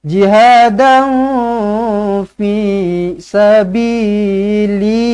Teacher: Dengungkan dengan dua harakat, samar-samarkan dia. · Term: ikhfa hakiki